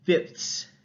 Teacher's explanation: they put a t sound instead of a th sound it breaks up those three fricatives with a stop